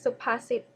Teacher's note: first syllable low tone, second syllable mid tone, and third syllable low tone.